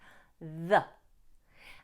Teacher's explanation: here the TH must be pronounced fully with the tongue between the teeth. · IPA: /ðə/